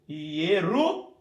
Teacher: Eu tenho o Shurek Vav, ou Shurek, que é o U longo.